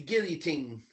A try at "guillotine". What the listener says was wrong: No, don't even say the L's. Just say "gi" and then a teen.